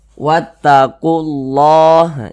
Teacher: ada lafaz Allah sebelumnya ada huruf yang memiliki tanda baca domah maka lafaz Allahnya ini dibaca tebal